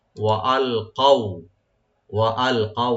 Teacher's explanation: কাফটাকে right দিবেন, যে জিব্বার গোড়া থেকে আসবে